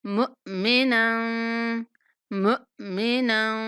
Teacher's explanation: یہاں میم کے بعد ساکن حمزہ ہے تو ہم نے حمزہ کو جھٹکے کے ساتھ پڑھنا ہے۔ مک نہیں کرنا کہ کاف ادا ہو جائے، اور نہ ہی منہ کہنا ہے کہ ہا ادا ہو جائے۔